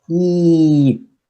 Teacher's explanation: It's high and front. High, front.